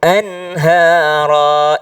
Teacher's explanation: Jadi nun ketemu dengan ha itu tidak berdengung. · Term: izhar